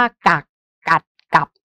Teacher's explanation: มันเป็นสระเสียงสั้นหมดนะคะแล้วก็เป็นเสียงวรรณยุกเอก